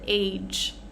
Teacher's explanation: We're not getting a G sound, but a J sound.